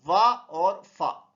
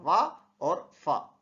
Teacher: आपका नीचे वाला ओठ हल्का सा अंदर की तरफ जाएगा और दांत से टकराएगा, वा और फा। ठीक है, उनको हम बोलेंगे दंतोष्ठ।